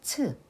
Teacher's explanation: 치읓 is the aspirated sound of 지읒 and is a consonant derived by combining 지읒 and 히읗.